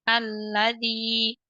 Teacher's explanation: Pada kata alladzi kita tekan di huruf lam yang berharokat fathah.